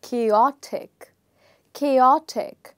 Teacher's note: the stress in the word is changing from the first syllable to the second syllable